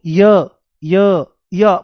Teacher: शुरुआत में एक बहुत बारीक बहुत छोटी इ की आवाज आती है।